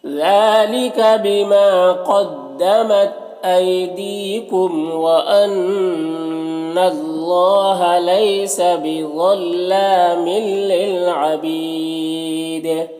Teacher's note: للعبید، یہاں پر یا مدہ ہے، وقف کی صورت میں دال کی جو زیر ہے وہ سکون سے بدل جائے گا تو پھر دال میں قلقلہ ہوگا، اور وقف کی صورت میں مد عارض وقفی بھی ہوگا، تو اس طرح سے پڑھیں گے۔